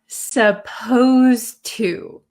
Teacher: And notice when I pronounce supposed to, the D sound and the T sound become kind of like one sound. So when I speak supposed to, it doesn't sound like there's a D.